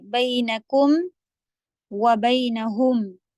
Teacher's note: اچھا جہاں پہ کاف کے اوپر پیش ہے آپ ہونٹ گول کریں گی، میم کے لیے سیدھے کم بول کے دیکھیں. کاف کے لیے ہونٹ اتنے گول کریں کہ کو، اور پھر میم پر آتے ہی آپ کے ہونٹ سیدھے کر لیں. بینکم وبینہم، تب آواز کلیئر نکلتی ہے.